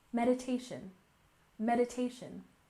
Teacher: And next we have meditation with stress on the first syllable.